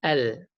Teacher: Kalau kita sebut lam, al, ujung lidah naik ke atas, selangit atas